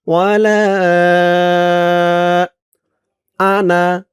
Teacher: যদিও জবরের পরে খালি আলিফ আছে কিন্তু এখানে টান হবে না